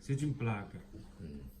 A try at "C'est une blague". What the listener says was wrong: C'est une blague. Non, peu. Tu prononces peu.